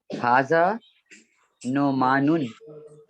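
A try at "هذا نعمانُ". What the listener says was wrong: زبردست.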